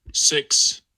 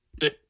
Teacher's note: So that clues you into the fact that what follows, the silence that follows, is in the velar place of articulation. And a voiceless velar stop is a K